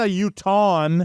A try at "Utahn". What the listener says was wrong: It's Utahn. Utahn. There's no vowel to make it Utah in.